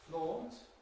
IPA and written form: flɔːnt (flaunt)